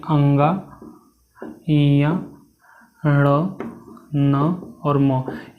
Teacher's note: यह आपके पांच के पांच किसम होंगे तो आपके नासिका से उच्चारित किए जाते हैं